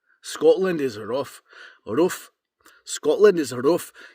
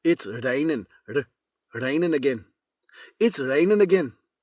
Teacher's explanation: tap your Rs like there's a little bump right behind your teeth and you've got to tap your Rs right there. Every R is pronounced.